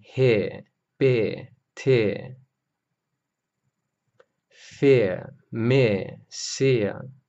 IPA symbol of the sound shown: ɪə